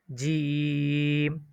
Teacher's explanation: জিম বলতে গেলে তিন আলিফ টান হবে